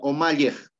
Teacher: Esta i ya no va a ser vocal cerrada i, sino se convierte en una vocal abierta e. Entonces la pronunciación sería omalyej, ¿ya?